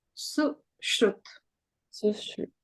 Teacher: it's the long oo sound, even though it's just the one U